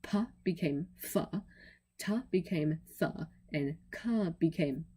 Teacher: those became voiceless fricatives, which remember are the ones that are said through a narrow channel.